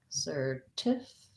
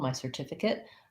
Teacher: if we're talking about the noun certificate, something I can hold, my certificate, I'm going to have second syllable stress. This C says the S sound.